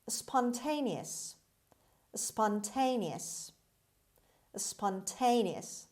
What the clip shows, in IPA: spɑːnˈteɪniəs